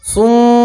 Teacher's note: मीम के ऊपर तशदीद है इसलिए गुन्ना करेंगे